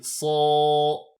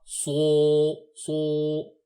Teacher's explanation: Je dis so sans utiliser les lèvres, et je ne dis pas so.